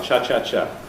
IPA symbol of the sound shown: ʧɑ